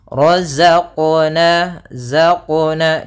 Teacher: Nah, dia ada sifat yang namanya sifat jahar, dan dia sifat rokhawah. Ya, za itu rokhawah, artinya suaranya mengalir tapi nafasnya tertahan